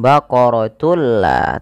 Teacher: memasukkan tunnya kepada lam dan diganti bunyi suara nunnya menjadi suara lam. Baqaratul la, tapi tidak ditahan. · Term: idgham bila gunnah